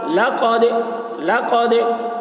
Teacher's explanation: دال حروف قلقلہ میں سے ہے اور اس پر جزم ہے، اس لیے دال میں قلقلہ ہوگا۔